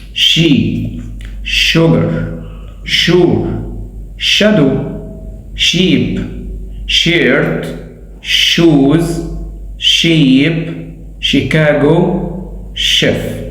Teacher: To make the unvoiced sound, bring your mouth and lips forward. Teeth should be slightly apart. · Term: unvoiced sh sound